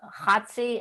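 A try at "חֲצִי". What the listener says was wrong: it with the CH. I put CH because I want you to say Chatzi, but they'll have it the letter H with a dot under it.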